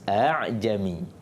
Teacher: Tapi untuk perkataan ni Hafs dibaca tashil, iaitu antara hamzah dan alif. Kalau tahqiq tadi itu perkataan yang asal.